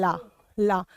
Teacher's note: आपकी यह जो जुबान है यह आगे दांतों के पीछे टच हो जाएगी और ला बोलने के लिए आपकी वायु दोनों तरफ से निकलेगी · जो जुबान है यह आगे दांतों के पीछे टच हो जाएगी और ला बोलने के लिए आपकी वायु दोनों तरफ से निकलेगी जीव के दोनों तरफ से जब वायु निकलती है तो उस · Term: पाशविक व्यंजन